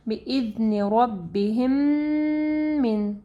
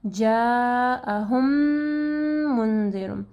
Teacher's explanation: میم کیونکہ ہم لوگ ہونٹوں سے ادا کرتے ہیں، تو آپ کے ہونٹ جو ہے یعنی 1-2 سیکنڈ کے لیے بند رکھنے ہیں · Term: ادغام الشفوی